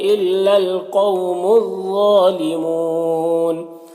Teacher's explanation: ظالمون، غا کو پر پڑھیں گے، حروف مستعلیہ میں سے کھڑا زبر ایک الف کے برابر کھینچیں گے، اور یہاں پر واو مدہ ہے اور نون کا زبر سکون سے بدل جائے گا وقفی کی صورت میں، تو مد عارض وقفی ہوگا۔ اس میں طول، توسط، قصر تینوں جائز ہوتا ہے۔